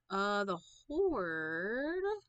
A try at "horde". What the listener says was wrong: Make sure you enunciate on the D.